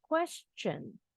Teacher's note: huruf t nya bunyinya CH